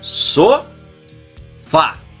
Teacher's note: a sílaba forte é a última sílaba da palavra então dividido as sílabas da palavra sofá fica só vá e